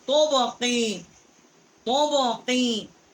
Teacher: بڑی قاف ہے، کوے کے متصل. زبان جب اوپر کے تعلق سے ٹکر کھاتی ہے تو وہاں سے اس کا مخرج ہے.